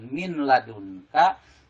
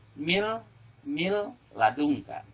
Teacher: Jadi min ini n-nya hilang, masuk ke dalam huruf lam. Jadi yang terdengar suara lam. Jadi jangan min ladunka, tapi mil ladunka, ya. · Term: idgham bila guna